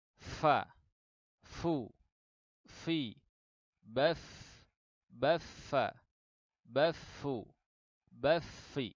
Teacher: bibir bawah bagian dalam bertemu dengan ujung gigi seri atas, keluar huruf fa di situ.